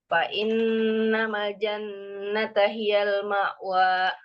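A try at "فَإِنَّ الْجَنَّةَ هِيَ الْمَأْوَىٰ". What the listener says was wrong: Innal enggak ada ma. Jadi lamnya fa innal jan.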